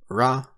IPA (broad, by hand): ɹ